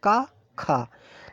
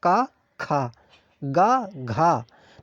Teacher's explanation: जब आप ख बोल रहे हैं तो जो यहां पर श्वास है वो ज्यादा बार फेंकी जा रही है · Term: महाप्राण